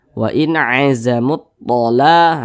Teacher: Karena huruf lamnya ini dia dibaca idgham. Jadi huruf lamnya ini dia tidak dibaca. Makanya di sini kan tidak ada tanda bacanya kan huruf lamnya. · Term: idgham syamsiyah